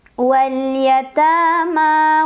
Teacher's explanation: Wal yatama ma mad tabi'i. Karena ada fathah berdiri pada huruf mim. Dibacanya panjang 2 harokat.